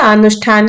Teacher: स जो दंत्य है उसको मूर्धन्य में बदल देंगे और थ जो है उसको हम ठ में बदल देंगे